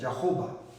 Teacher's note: No sé por qué han cambiado la E, pero suena como A. La H en inglés no es muda, sino suena como la J castellana